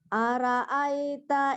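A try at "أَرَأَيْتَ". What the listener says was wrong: Ara. Aro bukan ara mana nama orang.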